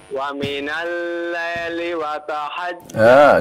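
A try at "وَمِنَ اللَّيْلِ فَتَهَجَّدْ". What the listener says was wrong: Coba lihat konsentrasi, hurufnya fa bukan waw ya. Qalqalahnya jangan lupa, fatahajjad qalqalahnya ya.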